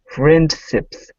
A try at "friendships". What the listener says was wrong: Get the SH. Push your lips out. Shh. Friendships. Okay, so when you pronounce the SH, it's shh. Lips come out. Ships. Friendships. Friendships.